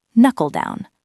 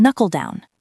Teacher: the LE sound flows into down